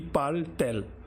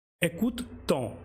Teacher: Now if we do inversion here, it will be parle-t-elle. We have put extra t because there will be two vowels facing each other, and just to avoid the pronunciation hurdle, this t is there, but it doesn't have any specific meaning.